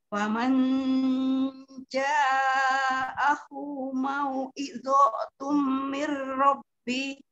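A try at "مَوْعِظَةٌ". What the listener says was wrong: Azonya jangan sampai kepanjangan. Wa mau'izatum gitu.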